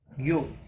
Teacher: ہوگا، لا یؤمن میم کو ظاہر کر کے پڑھیں گے، یو حمزہ ساکن تھوڑا جھٹکے کے ساتھ پڑھیں گے